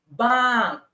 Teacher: bang with flat tone not falling tone